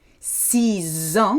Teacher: So if you're saying 6 years, 6 ans, you can hear them merged together.